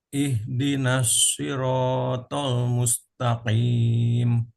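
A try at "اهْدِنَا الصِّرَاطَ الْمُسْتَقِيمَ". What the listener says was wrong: Sedikit nunnya juga ditipiskan lagi. Ihdinas siratal mustaqim.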